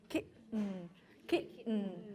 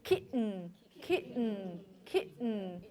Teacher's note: What's happening there for many American English speakers is you block the air using your vocal folds. You block the air here and let go. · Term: glottal stop